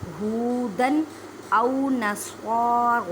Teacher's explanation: سواد کو ادا کرتے وقت خیال رکھیں کہ سین کی آواز نہ آئے کیونکہ حروف مستعلیہ یعنی موٹے حروف میں سے ہے